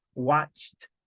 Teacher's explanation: aunque terminan ed, mire que tiene esa pronunciación de t